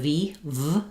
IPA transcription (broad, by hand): v